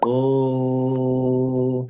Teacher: Now that's a long sound, okay, which means you can extend it, and you can say that sound for as long as you have breath in your lungs. You are using your voice, so it's not a voiceless or an air or a whispering sound.